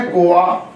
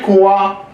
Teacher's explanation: तो व की जगह पे अ आ जाता है। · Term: अर्ध स्वर